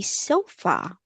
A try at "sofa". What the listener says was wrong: No H. Don't put an H sound. That's sofa. It's sofa.